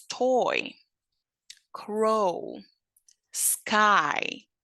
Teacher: see how it's one sound but it changes there is a Glide from one position to the other